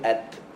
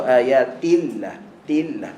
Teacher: Ta berbaris dengan ta yang mati. Ta yang mati dia ada hams. Dia ada hams. Maksudnya bila kita matikan at ada angin. Tetapi ta berbaris dia tak ada angin. Jangan ayatillah, jangan.